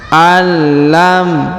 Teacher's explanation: ayahsabu ayahsabu allam kemudian huruf nun sukun bertemu lam bertasdid maka Nun sukunnya menghilang melebur ke huruf lam bertasdid Ya ditahan dan ditekan